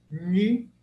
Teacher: N com ponto embaixo, ele é cerebral.